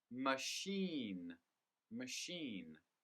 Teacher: with the word machine the stress is on the second syllable